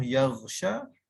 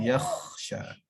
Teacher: sebutan ghin jadi sebutan kha